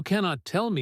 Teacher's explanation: you cannot tell me gets heavier stress on cannot, almost stretched